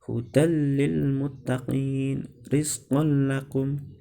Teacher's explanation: membacanya tidak berdengung otomatis dibaca pendek tidak dibaca panjang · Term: idgham bilagunnah